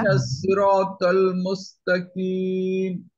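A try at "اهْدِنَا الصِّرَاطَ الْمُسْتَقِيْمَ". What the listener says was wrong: মানে কাফ হয়ে যাচ্ছে আপনার। কিম, কিম।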